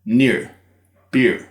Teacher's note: in that environment of an iə, followed by an r, it comes out as a short ɪ, followed by an r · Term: NEAR vowel